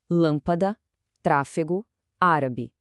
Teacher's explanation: Em todas elas, a sílaba forte é a antipenúltima. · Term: proparoxítona